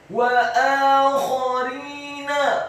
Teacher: Wa akharina, huruf wawunya dibaca fathah 1 harokat, huruf alifnya dibaca tipis, fathah 2 harokat karena harokatnya tegak. Huruf kha-nya dibaca tafkhim, tebal dengan posisi bibir bawah kita agak tertutup dan dibaca serak, fathah 1 harokat.